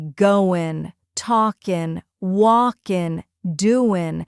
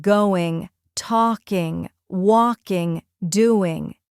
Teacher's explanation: Another interesting feature of American English is the disappearing G at the end of ing words.